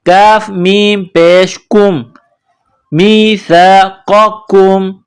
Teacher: قاف نقطوں والا قاف ہے، اس کو موٹا کرنا ہے، قاف زبر قا، میثاق، یہ بغیر نقطوں والا کاف ہے، اس کو باریک کرنا ہے